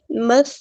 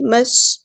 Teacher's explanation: سین کی آواز میں سیٹی آئے گی